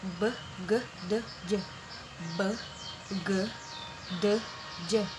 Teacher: From voiced are b, d, g, j. Ini letupan ringan, jadi biasa aja.